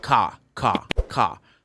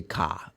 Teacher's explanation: we'll highlight the letter R and British you're not gonna highlight the letter R